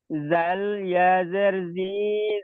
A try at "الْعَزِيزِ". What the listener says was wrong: এখানে জাল নেই, জা আছে। জা ইয়াজের জি, জা লামজের জিল।